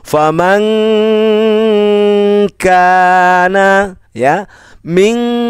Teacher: Di sini nun sukun bertemu dengan huruf kaf. Huruf kaf ini tidak termasuk huruf yang tidak dengung, berarti dibaca dengung.